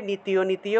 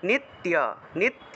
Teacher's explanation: তিতে গিয়ে টান দেওয়া যাবে না